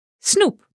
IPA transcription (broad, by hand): snʊup